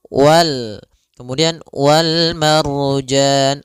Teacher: wal marjan ada ro sebelumnya fathah maka dia ro tebal